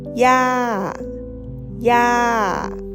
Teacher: We say ya ya with a falling tone.